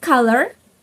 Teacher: In American, the word color is pronounced color. The r sound is pronounced.